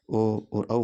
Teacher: वे वर्ण जिनका उच्चारण कंठ और होठों के माध्यम से होता है। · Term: कंठोष्ठ